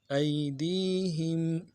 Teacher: ای میں یائی لین ہے، بغیر کھینچے